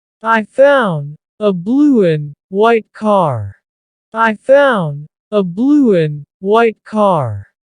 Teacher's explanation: You're not actually making a D sound, but your mouth is making that shape car. My tongue is flat against the roof of my mouth to make the D, but it's not coming out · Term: final D sound